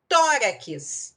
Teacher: a sílaba tônica é a segunda de trás para frente. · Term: paroxítona